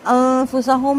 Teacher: نون ساکن کے بعد فا ہے، باریک اخفا کریں گے